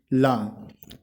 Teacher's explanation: जिस व्यंजन के उच्चारण में जीभ श्वास वायु के मार्ग में खड़ी हो जाती है और श्वास वायु बगल से प्रवाह से जाती है उसे पार्श्विक व्यंजन कहते हैं, जैसे ला।